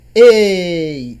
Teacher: O E é mais forte, portanto o E é a vogal, e o I é a menos forte, portanto é a semivogal. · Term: ditongo decrescente